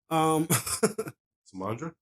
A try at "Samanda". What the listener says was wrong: Samanda. Yeah, there's no R in that.